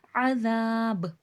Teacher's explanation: وقف میں با پہ بھی خلخلہ واضح ہوگا